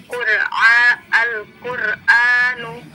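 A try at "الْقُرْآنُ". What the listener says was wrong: Coba diulang, Al-Qur'anu. Lamnya di situ ada pantulan tadi ya.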